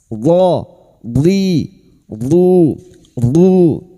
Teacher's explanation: huruf dod yang memiliki sifat yang tidak dimiliki oleh huruf lain yaitu sifat istidola tepi lidah nempel pada gigi geraham atas